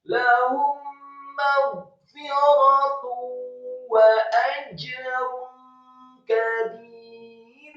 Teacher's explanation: Kata kabir, kafnya dibaca tipis, fathah 1 harokat, kemudian ba-nya dibaca tipis, kasrah 2 harokat karena setelahnya ada ya sukun, dan membaca huruf ra yang sukun dibaca tipis karena sebelumnya adalah huruf ba yang harokatnya kasrah dan 2 harokat